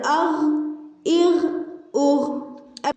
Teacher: اب دیکھیں آواز آ رہی ہے حلق کے اوپر حصے سے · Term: غین